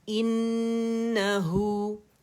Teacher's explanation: نون حرف غنہ مشدد ہے تو اس کے اوپر ہم نے کیا کرنا ہے 2 سے 2.5 3 کاؤنٹ تک کا غنہ کرنا ہے. آواز سے شو کریں گے اکمل گریڈ کا غنہ ہوگا.